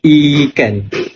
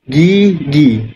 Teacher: Hujung lidah didekatkan dengan gusi. Langit lembut naik dan pintu suara bergetar. Bibir terhampar. Terhampar ni maksud a dia macam buka. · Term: vokal depan sempit